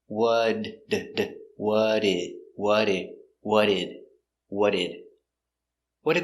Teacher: link the sounds you don't pronounce the t just the d